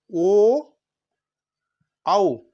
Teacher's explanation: कंठोष्ठ, कंठ और ओष्ठ, कंठ से भी आएगा आवाज और ओष्ठ से भी आएगा।